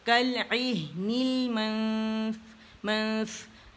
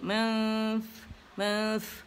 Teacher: من نہیں کہیں گے, من نہیں ہوگا کیونکہ ہائیڈ کریں گے, اخفاء حقیقی ہے.